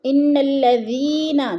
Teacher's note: الذی پہ یا مدہ ہے، تھوڑا سا لمبا کر کے پڑھنا ہے